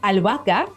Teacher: they have a silent H right in the middle